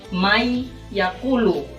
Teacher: dengan huruf Yap didorong digunakan jadi cara membaca yaitu May yaqulu jadi Nun itu tidak dibaca jadi ketika membaca mayakulu itu didengungkan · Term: Idgham Bighunnah